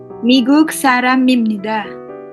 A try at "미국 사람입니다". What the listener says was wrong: Wih, 100.